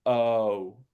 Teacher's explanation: let the lips be relaxed at the start and then very round at the end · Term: 2-part vowels